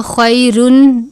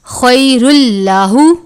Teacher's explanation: خیر اللہ، خوا یا زبر خوئی ہے، یا ساکن سے پہلے زبر ہے یا لین ہے، تنوین ہے، اس کے بعد لام مشدد ہے، یہ لام حرف یرملون میں سے ہے تو یہاں پر غنہ نہیں کریں گے